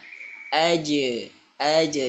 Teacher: As kemudian huruf jim. Huruf jim dia memiliki sifat mantul qalqalah ya